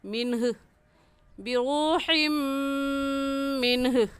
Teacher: ये हा हलक का आखिर जो सीने की तरफ है वहाँ से निकलता है, निकाल कर पढ़ेंगे।